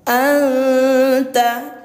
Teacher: samar dan dengungnya itu dihitung dua harakat sudah bergabung ya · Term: ikhfa